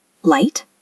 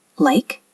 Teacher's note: For the L sound, your tongue touches the roof of your mouth, right behind your front teeth.